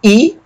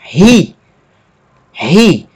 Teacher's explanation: Mas aqui no final nós temos um iota com uma aspiração forte, que altera a pronúncia da vogal. No lugar de pronunciar I, nós vamos pronunciar ri.